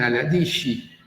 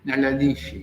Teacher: Ellos dicen a la di porque no pueden pronunciar consonantes al final de la palabra. Le dan una i que no existe.